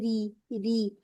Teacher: را پر کسرہ نظر آ گئی تو اس را کو ہم مرکک یعنی کہ پتلا پڑھیں گے